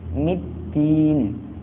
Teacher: alif lam tidak dibaca namun diidghamkan atau langsung dimasukkan ke huruf dal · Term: alif lam syamsiyah